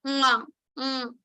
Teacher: So ka varga is produced from your kantha, throat. So we have to use throat along with your nose, and then we can produce nga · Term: nasal consonant